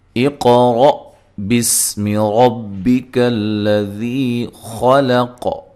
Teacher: حمزہ کو تحقیق سے پڑھنا ہے، قاف کو موٹا ادا کرنا ہے، قاف پہ قلقلہ کرنا ہے، ہلا کر پڑھنا ہے، اور را کو موٹا ادا کرنا ہے، اور را کے اوپر زبر ہے۔